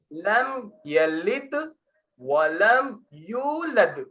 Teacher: लद शुरू हो रहा आराम से, खत्म हो रहा टक्कर खा के।